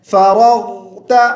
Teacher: غین کی آواز منہ کے اندر چلتی جائے، لمبا کھینچیں گے